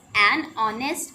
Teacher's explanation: We have used "and" with honest because in this word the sound of H is silent